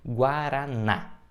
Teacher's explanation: a gente tem a sorte tem um acento agudo então automaticamente a gente já sabe onde está a sílaba tônica ela é oxítona porque é a última sílaba da palavra